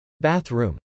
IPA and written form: bˈæθr.um (bathroom)